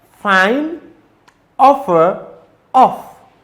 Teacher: The labiodental fricative is produced by bringing the lower lips into contact with the upper teeth